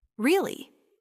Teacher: A really simple one is really with a rising tone. It shows surprise or interest.